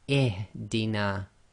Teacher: we read the Hamza-tul-Wasl as if it's got a kasra.